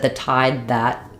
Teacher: we're going to use an unreleased D. So how the D sounds at the end depends on the next vowel.